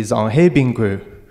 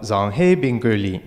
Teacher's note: the pattern is that the tone starts low goes high and then gradually decreases and this is all just determined by the the tone of